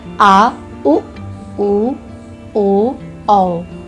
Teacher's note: जिन स्वरों को बोलने में जीभ के पिछले भाग का उपयोग किया जाता है उसे पश्च स्वर कहते हैं, जैसे आ, उ, ओ, औ।